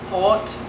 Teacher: So you have the R that starts in the beginning of the word, so for words like rot, meaning red, not sure I did a good job on that one, but it's a more guttural sounding. It's at the back of your throat, basically.